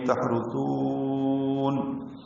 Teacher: اور تھا کو نرمی سے پڑھتے ہوئے لمبا کریں گے